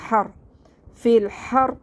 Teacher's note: را ساکن سے پہلے زبر ہے، اس لیے ہم را کو موٹا پڑھیں گے